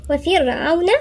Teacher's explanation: الراء هنا مرققة لأن الراء ساكنة وقبلها مكسور، فاحنا نشوف على حسب اللي قبلها إذا كانت هي ساكنة.